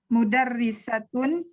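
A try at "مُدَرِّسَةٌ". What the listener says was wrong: Mudarrisatun. Tun. Mudarrisatun. Pakai tanwin tapi panjang saya.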